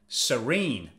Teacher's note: Again, stress is on the second syllable.